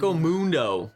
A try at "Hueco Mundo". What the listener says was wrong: Waco. No need to pronounce the H. Waco.